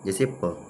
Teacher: व्यंजनों के उच्चारण में दोनों होठ परस्पर करते हैं, स्पर्श करते हैं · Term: ओष्ठ